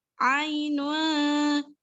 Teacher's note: Jadi bacanya ainun, samar-samar di antara bunyi vokal huruf N dan NG di tengah-tengahnya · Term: ikhfa hakiki